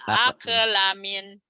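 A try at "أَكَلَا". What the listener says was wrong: aqla, la-nya panjang, aqlamin, Jangan ake, tapi ake, ake, ake,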